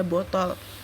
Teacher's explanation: suku kata kedua yang lemah tidak mengandung vokal sama sekali tetapi seluruhnya terdiri dari konsonan